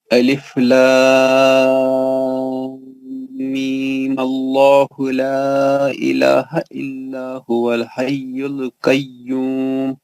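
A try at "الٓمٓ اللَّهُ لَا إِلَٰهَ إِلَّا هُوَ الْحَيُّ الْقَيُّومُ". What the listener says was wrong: آپ صحیح نہیں پڑھے. آپ صحیح نہیں پڑھے. صحیح پڑھیے. میم کا غنہ تو برقرار رہے گا نا. وہ نہیں کرا آپ نے.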